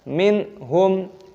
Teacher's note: Minhum, nun sukun bertemu dengan ha, idhar halqi, dibaca jelas